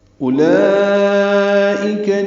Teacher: اولئک میں حمزہ اقصی حلق سے ادا کریں گے ، واو نہیں پڑھیں گے، لام پر مد متصلہ کھڑا زبر